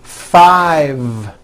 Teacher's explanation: i said five with a voiced v